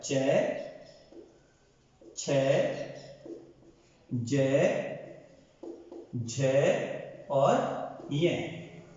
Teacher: च वर्ग का जो स्पर्श है वो होता है तालु के पास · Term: तालव्य